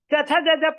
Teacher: च छ ज झ पढ़ते हैं तो तालु से पढ़ रहे हैं